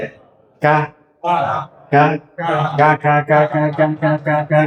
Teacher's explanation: নিচে হাত রেখে দুইটার দিকে দেখিয়া আবার খেয়াল করেন, জিহ্বার একেবারে গোড়ায় না, গোড়া থেকে একটু আগে বাড়াইয়া জিহ্বা টুকু বরাবর উপরে তালুর সাথে লাগা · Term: কাফ